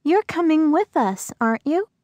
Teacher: notice the rising intonation in tag questions to confirm information